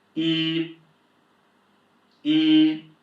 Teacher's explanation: The first tone, see that line above is the tone, if you if it's the first class that you're joining, there are four tones in Chinese. first tone is high flat and whenever you see a "y" and an "i" in pinyin, you just pronounce it as "yi", so this is yī yī, high flat.